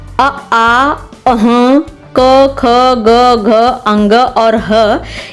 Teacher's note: कंठ वर्ण जो कंठ से पढ़ा जाता है